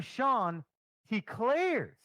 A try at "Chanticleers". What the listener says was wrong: No, the Clears. Not Claire's. Clears. Yeah, you sounded like you said Eau Claire.